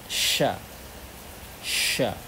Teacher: ketika kita ucapkan ada nafas yang tersebar bertebaran di dalam bagian mulut, sya ya, sehingga ada suara unik shinnya, sya, dan tersebar di antara di antara bagian mulut dan lidah, sya ya. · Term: tafasyi